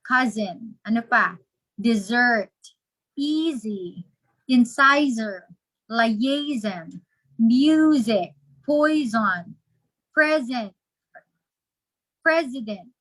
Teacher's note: for many instances the letter s is pronounced as z for example in cases that the letter s is in between